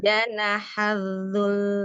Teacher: Lamnya di akhir tasydid, jadi sedikit ditambahkan panjang lamnya.